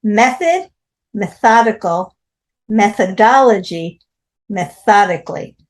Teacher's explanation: Method, method, 2 stresses. Methodical, the stress is on the tha. Methodology, the stress is on the dal. Methodically, it's on the tho. So the stress changes on this one.